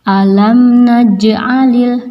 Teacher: jim mati dinamakan qalqalah, maka harus dipantulkan.